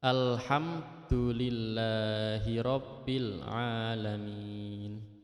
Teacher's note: Di situ ada mim mati bertemu dengan dal itu harus dibaca jelas. Jadi mim matinya jelas, dalnya tidak terpengaruh oleh huruf mim matinya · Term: idhar syafawi